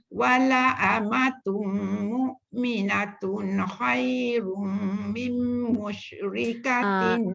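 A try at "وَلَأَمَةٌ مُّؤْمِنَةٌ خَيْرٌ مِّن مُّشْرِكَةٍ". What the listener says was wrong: Datuk kat situ banyak dengung. Dengungnya tu lama lebihkan lagi.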